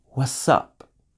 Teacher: Notice with what's up, the t sound disappeared completely.